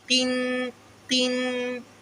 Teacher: پیچھے تالو کے ساتھ زبان لگائیں گے، اس کا مخرج پورا ادا ہوگا، لیکن قاف کو ذرا سا باریک کریں گے۔ قن کے مجہول نہیں پڑھیں گے، قن، قن۔